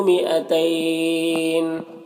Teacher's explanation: مئتین یہاں پر یہ الف کو نہیں پڑھنا ہے، ٹھیک ہے، اور تین یہاں پر یا لین ہے. وقف کریں گے تو نون کا زیر سکون سے بدل جائے گا، تو پھر یہاں پر مد لین عارض ہوگا. مد لین عارض، اس میں طول توسط قصر تینوں جائز ہوتا ہے، لیکن قصر بہتر ہوتا ہے، تو اس طرح سے پڑھیں گے.